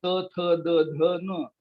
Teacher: दातावर जीभ आपटल्याखेरीज त म्हणता येत नाही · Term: त वर्ग